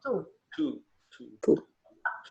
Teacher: two, Remember, even with the T, the T's and the D's, your tongue is behind your front teeth on the roof of your mouth.